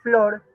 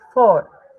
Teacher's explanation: también veamos la omisión que es flor y dicen for